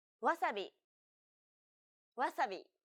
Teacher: The sounds may be the same, but don't forget that Japanese isn't a stress-timed language like English. So instead of stressing the second syllable like wasabi, make it even throughout